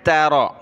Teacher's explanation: تا باریک را کو موٹا کیا